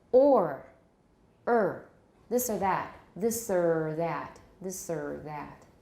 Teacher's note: With a schwa, a rhoticized schwa.